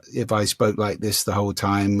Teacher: speaking all on one note completely monotone